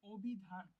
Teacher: অ এর সংবৃত উচ্চারণ হচ্ছে অভিধান, কারণ অভিধানে অ উচ্চারিত না হয়ে আমরা এটাকে ও উচ্চারিত করতেছি, অভিধান এরকম উচ্চারিত হয়ে যাচ্ছে।